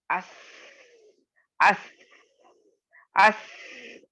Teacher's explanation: سین تو کہا جاتا ہے کہ حرف صفیر میں اگر اسٹرانگسٹ صفیر یعنی اسٹرانگسٹ اگر سیٹی کی آواز آتی ہے تو وہ سین سے آتی ہے، کیونکہ جب آپ سین کو ادا کریں گے اس اس اس آپ کو بہت واضح طور پر اس میں سیٹی کی آواز ظاہر ہوگی.